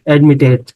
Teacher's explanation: Admit is accented on the last syllable and the final consonant is preceded by a vowel, so we double the T before adding, for instance, an ing or ed, admitting, or we can say what?